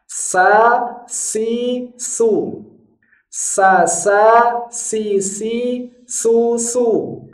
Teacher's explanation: cara mengucapkan huruf Sin kalau Sin bunyinya harus tipis monyongnya mulut ke depan itu adalah milik harakatnya bukan milik hurufnya